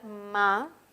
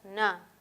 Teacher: Nasal bilabial ma versus la nasal alveolar na